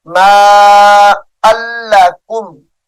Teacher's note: یہ لام اسم جلالت اللہ کا لام نہیں ہے، تو اس کو موٹا بھی نہیں کریں گے